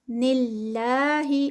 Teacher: اور پھر آگے نلّہ، اللہ سے پہلے زیر آ گئی ہے، اللہ کا جو نام ہے تو یہاں پر اللہ کا نام جو ہے وہ لائٹ ہوگا، ہیوی نہیں ہوگا، اور 2 کاؤنٹس کا اسٹریچ ہوگا.